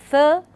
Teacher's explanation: when we utter the sound th, we generally do not feel the noise more or the vibration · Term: dental sounds